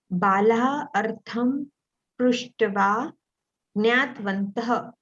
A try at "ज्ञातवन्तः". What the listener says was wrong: Jnata. Ta is full. You're saying jnatvantaha. You're saying jnat. But I'm saying jnata. Because if you say jnat, then the ta has to have halanta. And it is not a halanta. So we cannot say jnatvantaha. We have to say jnatavantaha.